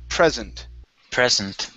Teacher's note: stress is at the very beginning